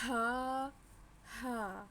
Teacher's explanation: تو آگے ہے ہا ہا، یہ ایک جیسے ہم آواز حروف ہیں، ان کی آواز ایک جیسی ہے لیکن تھوڑی سی پڑھتے ہوئے ان کو ہم نے تھوڑا سا ڈفرینٹ کرنا ہے، اس کو بڑی ہے کو زیادہ حلق سے نکالنا ہے اور اس کو ذرا ہلکا نکالنا ہے